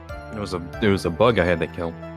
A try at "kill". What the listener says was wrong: The way you just said kill. You went kill, and you kind of like lowered the LL part. You went kill and lowered your voice slightly.